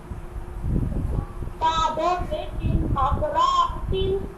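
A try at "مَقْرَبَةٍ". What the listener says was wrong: No, ra is simple voice, not long. Maqrabatin.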